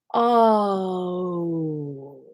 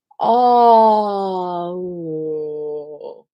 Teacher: But when you break it down in two, it's easier because it really is two. The two sounds that make up the sound O are ah and ooh.